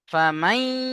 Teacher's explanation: ইদগামে ইয়ার মালুনের ইয়া এসছে। তাই নুন সাকিনকে ইয়ার সাথে মিলিয়ে একালিপ গুণনা করে পড়তে হবে। একে ঈদগামে নাকিস বলে।